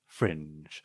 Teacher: It's neutral sounding, and then you've got this very lowering intonation towards the end.